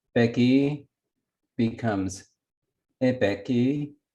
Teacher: it lowered the tone of the initial syllable of peki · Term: tonal lowering